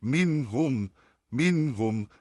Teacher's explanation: मीम और नून में उसकी आवाज में ही गुना निकल के आता है